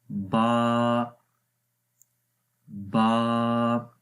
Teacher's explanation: تو با کیونکہ ہونٹوں کے کناروں سے پڑھا جاتا ہے، اس لیے اس با کے اندر صفت اذلاق ہے اور یہ آسانی کے ساتھ، سہولت کے ساتھ پڑھے جاتے ہیں.